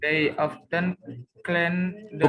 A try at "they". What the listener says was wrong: Bukan T, tapi they.